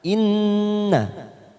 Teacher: Wa inna gunnah 3 ketuk kita tekan